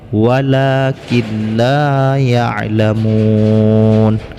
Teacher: menkeu dalam lam sehingga non ini tidak dibacakan lagi akan tapi idgham bilagunnah idgam tidak berdengung Walah kindai ya alamun padanya lemon ini Mad Arid lissukun panjangnya